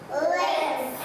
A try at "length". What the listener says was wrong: It's the TH, look at my tongue. Length. Length.